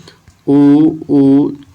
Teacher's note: ओट से उ उऊ और प वर्ग बोला जाता है